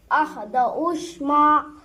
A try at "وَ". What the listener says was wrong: नहीं, अलिफ भी नहीं है वो। वहाँ पर होगा वो वाह होगा, वाह दहुश, वाह होगा वो। दउश नहीं, दहुश।